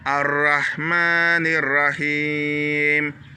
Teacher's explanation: Ici, on tire le Ma, c'est une longue syllabe